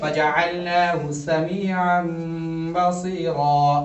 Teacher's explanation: یا ساکن سے پہلے زیر، یا مدہ ایک الف کے برابر کھینچ کے پڑھیں گے